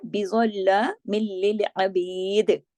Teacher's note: بظلام میں زا موٹا پڑھا جائے گا، باقی سب باریک پڑھے جائیں گے